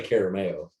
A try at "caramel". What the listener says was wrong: We don't say caramel. It's not a 3-syllable word.